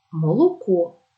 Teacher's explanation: голосний о ніколи не наближається до А образ молоко голосний о ненаголошений перед складом з наголошеними у і